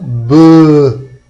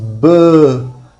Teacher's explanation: Por que ele é mais forte? Porque ele é vozeado, porque as cordas vocais estão tremendo.